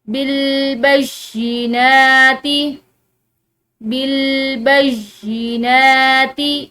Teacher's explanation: یا جو ہے اس مشدد ہے یہاں پر، تو پچھلے حرف کے ساتھ ایک دفعہ مل کر پڑھا جائے گا اور دوسری دفعہ اکیلا